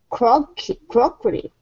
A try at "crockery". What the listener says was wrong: Yeah, crockery.